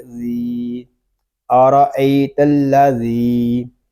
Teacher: ذال کو ہم ایک الف تک کھینچ کر پڑھیں گے کیونکہ یہاں پہ یا مدہ ہو رہا ہے، اور حرف مدہ کو ہم ایک الف تک کھینچ کر پڑھیں گے۔